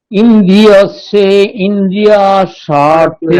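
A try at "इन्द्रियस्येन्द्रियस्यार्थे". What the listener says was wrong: একই ভুল করছেন। ইন্দ্রিয়স্যে ইন্দ্রিয় এরকম মাঝখানে কোনো হ্রস্ব ইকার নেই, ঠিক আছে? ইন্দ্রিয়স্যেন্দ্রিয়স্যার্থে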